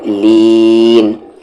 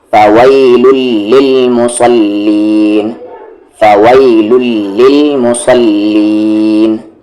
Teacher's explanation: پھر لی کو کھینچتے ہوئے آپ کو نون ملا دینا ہے